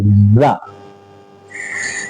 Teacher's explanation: تو زبان کی نوک کو ثنایا سفلا کے کنارے لگائیں گے اور کچھ تھوڑا سا اوپر ثنایا علیہ سے بھی ملے گی وہ نوک، تو وہاں سے زا زا کی آواز نکلے گی، زا۔